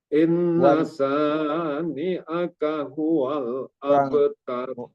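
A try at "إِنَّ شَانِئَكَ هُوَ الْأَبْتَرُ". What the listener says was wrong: Dengungnya kurang. Inna syani. Inna itu guna. Inna syani. Shinnya juga kurang. Shin itu tebal ya. Sya. Bukan sa. Inna syani'aka huwal abtar.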